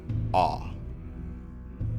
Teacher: the low back unrounded ah